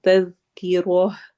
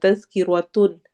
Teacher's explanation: اگر ہم اس کو وقف کے بغیر پڑھیں تو یہ تن پڑھا جائے گا، تذکرۃن، لیکن اگر ہم یہاں پہ رکیں تو یہ تا ہا کی شکل اختیار کر لیتا ہے۔ وقف کرتے ہوئے ہم اس کو پڑھتے ہیں تذکرہ۔ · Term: تائی مربوطہ